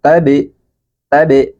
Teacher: pantulkan huruf ba yang dalam keadaan sukun ini